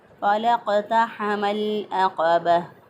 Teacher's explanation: अक़बह फ़लक़तहमल अक़बह, लाम का लाम साकिन के बाद देखें आइन आ रहा है और यहाँ पर लाम का इज़हार हो रहा है, लाम को ज़ाहिर करके पढ़ रहे हैं, इदगाम नहीं कर रहे। लाम को हमने आइन के अंदर दाखिल नहीं किया क्योंकि जो आइन है वो हरूफ़ क़मरिया में से है, यहाँ पर इज़हार क़मरी हुआ है।